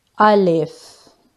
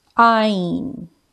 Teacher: But Alif is pronounced with empty mouth. Alif. And Ain is pronounced from the middle of the throat.